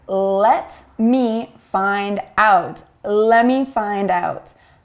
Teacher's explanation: if the T comes after or before an N or an M sound, we often omit it